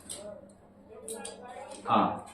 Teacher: इसमें विवत स्वर में मुख पूरा खुला रहता है